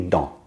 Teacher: So the next word begins with an L, not a vowel or a silent H. So we say dans, and the S stays silent.